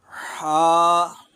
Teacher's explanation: بغیر نقطے والا ہا ہے اور اس کو حلق کے درمیانی حصے سے ادا کیا جاتا ہے۔ کوشش کریں کہ اس کو ادا کرتے وقت شروع میں ایسی آواز آئے۔